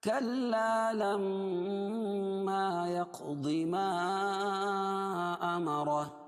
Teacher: لما یعنی الف سے پہلے زبر ہے اس لیے الف مدہ اور میم پر تشدید ہے، نون مشدد اور میم مشدد میں غنہ ہوتا ہے. نک میں آواز کو غنہ کریں گے ایک الف کے برابر.